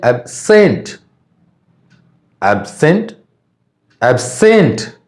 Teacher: यदि ये वर्ब रहेगा तो सेकंड सिलेबल में स्ट्रेस पड़ता है।